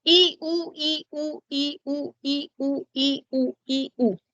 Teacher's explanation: Cuando dices así, I, U, I, U, I, U, tu lengua va de adelante hacia atrás, delante hacia atrás, delante hacia atrás.